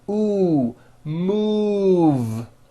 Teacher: notice how my lips are puckered tight and forward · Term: u sound